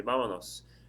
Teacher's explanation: Now when you do that, vámonos is ba-manos. It's 3 syllables. The stress of the word is on the first syllable